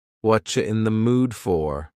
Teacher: the word you has been reduced to cha. Cha, this is extremely common in spoken English that the word you get's changed up in a lot of ways.